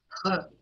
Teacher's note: ह जो है एक उरस्थ या ग्लोटल व्यंजन कहा जाता है।